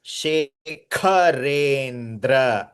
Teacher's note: Kha is Mahaprana. It's not Ka